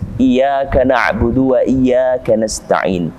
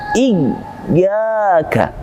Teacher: Kami himbau untuk menekan huruf ya ini dengan sebaik-baiknya penekanan. Tidak kemudian hanya sebatas tipis. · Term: ya bertasydid